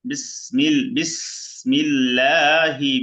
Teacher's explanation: এখানেও আল্লাহ শব্দ লামের ডান পাশে জের পাতলা হবে